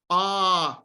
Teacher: Your jaw is down. Your tongue body is low and back. And it's your lips are apart.